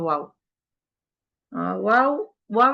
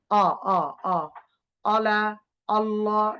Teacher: ওয়াও, ওয়াও এর সুবিধা হচ্ছে কি আমরা খেয়াল করব, ওয়াও মুখ গোল থেকে শুরু হবে, নরমাল হয়ে খুলবে, আবার গোল হবে